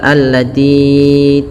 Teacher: tinya panjangkan ya sepanjang 4 harakat atau 5, dan kita kenal dengan mad jaiz munfasil.